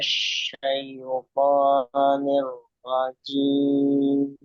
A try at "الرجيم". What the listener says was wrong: Jangan masuk hidung ya. Jim, jim, jim. Al-jauf.